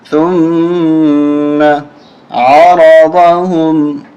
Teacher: را کو اور ضاد کو دونوں کو موٹا کریں گے، عین کو حلق سے نکالیں گے